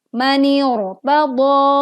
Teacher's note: Walaupun di sini ada huruf berharokat kasroh, tapi karena ro sukun didahului hamzah wasol, maka ro sukun dibaca tebal